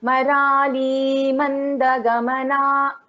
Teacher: In this Marali, it is a dirgha swara. So here we will prolong it a little.